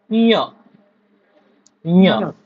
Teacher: य ला थोडं नाकामध्ये बोलायचं